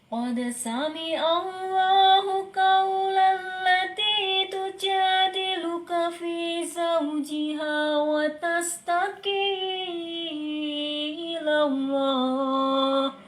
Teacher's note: pitch-nya agak diturunkan, jadi lebih ke didengerin kayak ada nuansa sedih ya